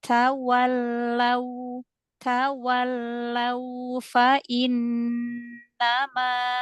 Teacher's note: Lin pada waw sukun, monyongkan lagi.